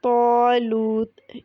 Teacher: صابرین، اس میں صاد مفخم ہے، اس لیے الف بھی موٹا۔ طالوت، اس میں طا مفخم ہے، اس لیے الف بھی موٹا پڑھا جائے گا۔